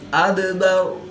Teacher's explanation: یا ساکن سے پہلے لام پر زبر ہے تو یا لین اس کو لمبا نہیں کریں گے. دال ساکن ہے تو یہاں پر قلقلہ صغرا کر کے پڑھیں گے